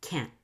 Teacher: The silence is very sudden. Suddenly, the air stops coming out of your mouth and creates this stop T.